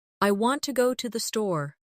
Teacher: The stress is on want and store. The words to and the are much softer. This creates the rhythm of English.